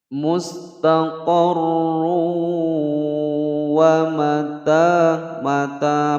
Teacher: ada dhammatain bertemu wawu dimasukkan kemudian didengungkan, masuk dengan dengung ya, idgham bi gunnah